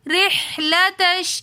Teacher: را کے نیچے زیر ہے تو اس لیے اس را کو ہم بالکل باریک پڑھیں گے